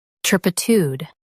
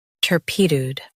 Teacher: U.S. stress tur, UK stress pi.